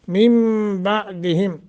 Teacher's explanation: मिन बादिहिम नून साकिन के बाद बा है, लिहाजा नून को मीम से बदल देंगे।